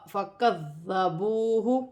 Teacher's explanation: کاف نرمی والا حرف ہے، اور فَكَذَّبُوهُ، کاف باریک کاف ہے اور ذال نرمی والا حرف ہے، مشدد بھی ہے، نرمی سے بھی ادا کیا جائے گا کہ سیٹی ادا نہ ہو